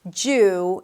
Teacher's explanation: it's a long vowel, so make sure you round your lips